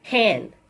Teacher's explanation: this is a voiceless sound it takes place at the glottis and it's a fricative sound